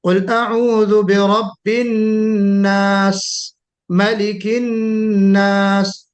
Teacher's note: ایک بیک نہیں روکنا ہے آواز کو سین پر، تھوڑی سی سیٹی ہلکی سی بجتی رہنی چاہیے، اسی کو ہم ہمس کہتے ہیں.